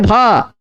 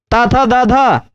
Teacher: दांत टच हुआ जिभिया से, तो धा का उच्चारण स्थान दंत है